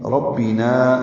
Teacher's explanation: نا الف مدہ ہے، 2 حرکات لمبا ہے